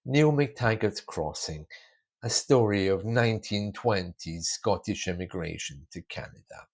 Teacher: my voice is flat and I'm pulling my intonation down with every word. There's nothing going up. · There's nothing going up. My intonation is my usual voice and down, not up.